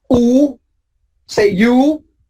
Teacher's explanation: If you can see inside of your mouth, you see that the back of the tongue is raised.